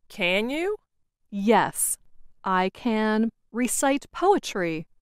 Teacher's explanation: the more wanted to emphasize or make her meaning clear, the slower she said the word can